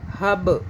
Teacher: یب جھٹکا دیں گے، قلقلہ ہے، قلقلہ کا معنی جھٹکا